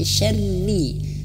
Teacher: huruf ro ini harus tipis ya, karena dia berharokat kasroh. Jangan sampai huruf ro-nya tebal.